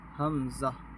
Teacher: اور یہ حلق کے نیچے سے، حمزہ